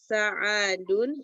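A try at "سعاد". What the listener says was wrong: Su'adu. Su'ad. Su'ad. Su. Jadi kalau ainnya panjang seperti ini bacanya su'ad. Kalau ainnya pendek sa'adun. Orang kita biasanya bilang sa'adun.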